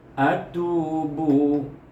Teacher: Ada hukum mad asli. Tu dibaca 2 harakah. Satu, tu 2, bu 2, 1.